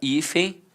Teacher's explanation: Observe que ambas são paroxítonas terminadas com som de em e ambas começam com som de i